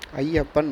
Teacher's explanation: ஐகாரம் அப்படின்ற ஐயை சொல்லின் முதலில் வரும்போது மட்டும்தான் ஒன்றரை மாத்திரை அளவில் ஒழிக்கும். அதே ஐ அப்படின்றது சொல்லின் இடையிலோ, இறுதியிலோ வந்துச்சுன்னா, ஒரு மாத்திரை அளவில் தான் ஒளிக்கும். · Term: ஐகார குறுக்கம்